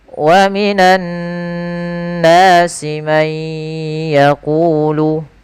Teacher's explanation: Asal dasarnya adalah man yaqulu. Karena dia bertemu dengan ya, suara nunnya hilang, suara n-nya hilang, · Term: Idgham bil gunnah